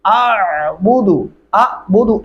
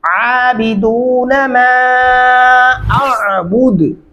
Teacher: मा मद्दा है दो अल्फी, अलिफ और आइन की आवाज दोनों अलग अलग महसूस होनी चाहिए। अबुदु अबुदु ऐसे नहीं करना।